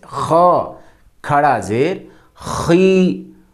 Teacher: خا گلے کے شروع والے حصے سے